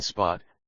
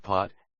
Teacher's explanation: A crucial distinction: Mandarin b, d, g are unaspirated, no puff of air, while p, t, k are strongly aspirated. It's the difference between spot, unaspirated p, and pot, aspirated p.